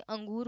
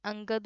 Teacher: किसी स्वर के बाद आने वाला व्यंजन जिसकी ध्वनि नाक से निकलती है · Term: अनुस्वार